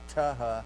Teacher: The aspirated sound. Or tau, alveolar, unvoiced, plus aspirate, ha